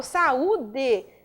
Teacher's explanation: sílaba tônica, penúltima sílaba, constituída por U, o U sozinho